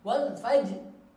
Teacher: Ro-nya tetap dibaca, bahkan ro-nya dibaca tebal. Kenapa? Karena ro-nya ini termasuk kondisi tebal. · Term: Ro-nya tebal